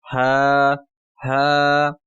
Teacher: ये आप अक्स उल हलक जो है यानी सीने की तरफ जो हलक होता है वहां से आपने अदा करना है